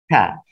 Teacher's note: Pelafalannya antara ujung lidah dan di belakang gigi atas.